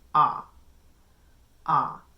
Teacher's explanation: my tongue is much lower, and actually my jaw comes down a little bit when I say ah.